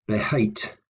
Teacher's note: notice the stress was on hate